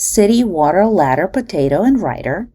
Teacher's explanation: what we actually produce and hear is a flap. We can thus conclude that the sounds T and D undergo a lenition process.